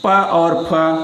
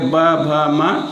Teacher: प और फ अघोष होंगे ब भ म सघोष होंगे